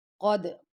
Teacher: कद काफ को मोटा पढ़ेंगे। दाल पर कलकला करेंगे। · قد قاف کو موٹا پڑھیں گے، دال پر کلکلا کریں گے۔